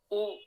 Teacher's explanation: उ 5वां स्वर है, इसका उच्चारण स्थान ओष्ठ है, ओठ